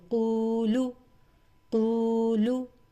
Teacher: قو جو ہے یہ واو مدہ ہے، اس کو قو 2 کاؤنٹس کے ساتھ پڑھیں گے، لیکن لام پیش لو یہ سنگل ہے، لام پیش لو اس کو جلدی 1 کاؤنٹ میں پڑھیں گے.